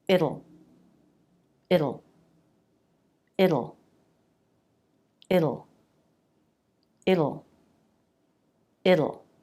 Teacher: the front of your tongue down it'll it'll it'll it'll just make sure the back part of the tongue presses down and back to get that dark sound